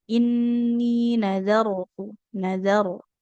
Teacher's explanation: ro sukun didahului oleh huruf zal yang berharokat fathah, maka ini dibacanya tebal